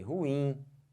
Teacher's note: Olha a força que eu botei, ruim. Força no in, não força no ru.